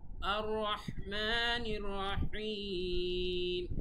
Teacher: আর রহমানির রহিম এভাবে নর্মালি বলা যাবে না, গলার ভেতর থেকে রহ বলতে হবে